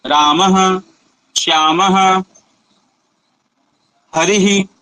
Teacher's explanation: हकार का उच्चारण हम करते हैं विसर्ग में, तो रामः, तो यह क्या है, कंठ से हो रहा है।